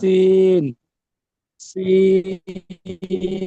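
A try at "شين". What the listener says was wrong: এগুলোর মধ্যে পার্থক্য হয়নি, সিন এবং শিনের মধ্যে পার্থক্য হয়নি।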